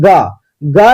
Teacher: ग कहते हैं तो लगता है कि मुंह में जो है काफी तेज घर्षण होती है